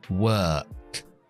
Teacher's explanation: Pues la K es muda, no utilizo la voz.